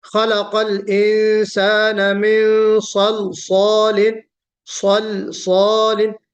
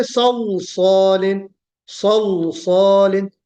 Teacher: جبکہ لام کو ہمیں باریک پڑھنا ہے